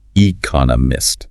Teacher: four syllables stress on the second one